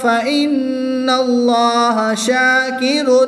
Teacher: نون مشدد میں غنہ کر کے پڑھیں گے